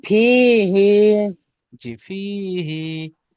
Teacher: হাইয়ের নিচে খাড়া জের এসছে, এটা ইয়া মাদার সমতুল্য। তাই একে একে একালিপ পরিমাণ টান দিয়ে পড়তে হয়